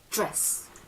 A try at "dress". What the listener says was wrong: Perfect, yay, well done, well done. Good job.